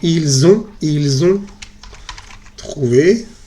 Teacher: Se diría exactamente il, con S que no se pronuncia. Luego se hace la liaison.